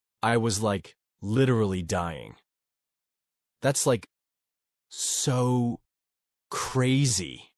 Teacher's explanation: That's the California Valley Girl accent. It's full of high-pitched tones, extra like words, and exaggerated emotions.